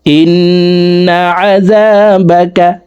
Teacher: ওয়াজিব গুন্নাহ 3 সেকেন্ড পরিমাণ গুন্নাহ করে পড়ব